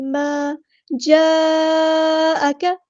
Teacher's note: بڑی یعنی بڑی مد، اس کو 4 یا 5 کاؤنٹ لمبا کریں گے کیونکہ مد آئی ہے اس کے فوراً بعد حمزہ اپنی اصلی شکل میں اسی کلمے میں آیا ہے. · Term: مد متصل